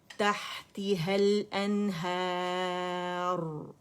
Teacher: अलिफ मद्दा है रा सुकून से पहले, रा मुखफ़्फ़म होगी · जब रा पे स्टॉप करेंगे रा मोटा होगा